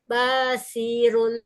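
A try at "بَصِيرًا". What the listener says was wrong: banyak pendek, ron, bashi. Nah, yang panjang itu shinnya ya Bu ya, karena di depannya ada ya sukun. Nah, bashiron.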